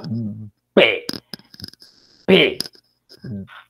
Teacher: hay una obstrucción Total no yo tengo que decir por ejemplo hay una obstrucción los dos labios tapan la salida del aire y ahí tenés tiene que hay una fuerza para reventar eso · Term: oclusión